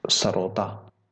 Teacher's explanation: हमारा स, जो कि दांतों पे टकराएगा, नीचे वाले दांतों पे